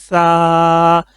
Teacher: اچھا، اسی طرح ہو گیا سا، بالکل اس کو لائٹ کر کے پڑھیں گے سا، سٹی کی آواز نہیں بنانی